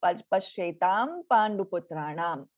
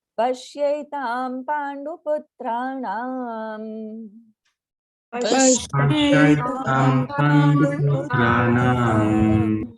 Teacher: There is a pashetam and then a pa, pandu, right? So the pa varga anuswara, the pa varga nasal sound is ma, right? So automatically it will become pashetam pandu putranam.